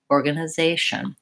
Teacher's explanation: see really here the rhythm of that word baba baba baba short short short long short